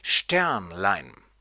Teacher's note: wieder ein Nomen ohne Vorsilbe und deswegen wird es auf die erste Silbe betont